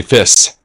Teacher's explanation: you would say fiss because there's no sh sound in it